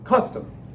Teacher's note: Stressed, unstressed. Long then short. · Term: trochee